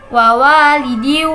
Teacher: ada tanwin bertemu dengan huruf wawu, maka dibaca idgham biguna.